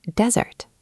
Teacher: The noun desert has stress on the first syllable.